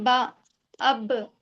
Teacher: अब देखिए बा को अदा करते वक्त दोहरी आवाज आ रही है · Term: कलकला